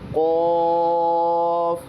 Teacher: फिर उसके बाद काफ यह जबान यह हलक जबान की जड़ों से निकलता है। इसको जबान की जड़ों से अदा किया जाएगा · پھر اس کے بعد قاف، یہ حلق زبان کی جڑوں سے نکلتا ہے، اس کو زبان کی جڑوں سے ادا کیا جائے گا، جیسے قاف۔